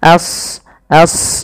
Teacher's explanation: ya a-nya tipis shadnya tebal karena Shad punya sifat huruf Istia dan idbaq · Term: Shad tebal